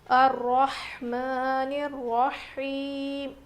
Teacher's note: ہا کی آواز بالکل ظاہر ہونی چاہیے، رو موٹا پڑھیں گے، کھڑا زبر ہے میم کے اوپر.